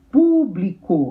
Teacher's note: Proparoxítona, a sílaba tônica é a antepenúltima